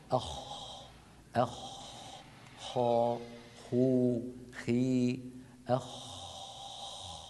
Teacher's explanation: الخاء تخرج من أدنى الحلق، أدنى يعني أقرب منطقة من الحلق إلى ظاهر الشفتين. أخ خا خو خي أخ، وهو حرف مهموس، مهموس يعني يجري معه النفس وعند نطقه لا يهتز اللوتران الصوتيان. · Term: حرف الخاء